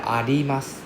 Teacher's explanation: the R is more of a L sound